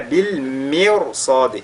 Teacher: Ici au niveau de mirsad, la lettre ra est lue avec at-tafkhim